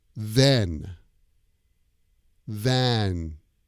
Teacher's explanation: and the end of the word is an N sound mm-hmm the n sound your tongue goes to the top of your mouth hmm and it kind of presses there